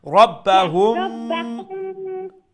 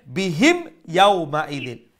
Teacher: We're not going to do any nasal sound. We're going to say it clearly.